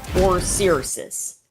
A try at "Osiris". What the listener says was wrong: Too many S's, but close. Just Osiris.